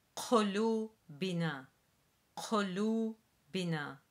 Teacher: be mindful of the Q sound, which we've said before is essentially a K sound, but produced in the back of the throat.